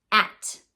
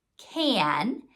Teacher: an A that's followed by an N, that it's changing the sound of the A to be whiny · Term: whiny A